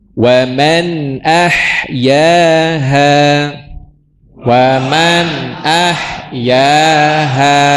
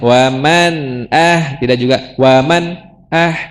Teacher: yang izhar tidak boleh ada tambahan bunyi ya. Tuh tidak ditahan lama, tidak juga terhenti, tidak juga mantul.